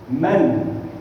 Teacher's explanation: The sound of noon is a bit more visible because there's still the gunna there